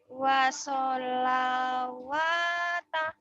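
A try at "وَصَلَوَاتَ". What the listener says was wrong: Wassalawata. Bagus.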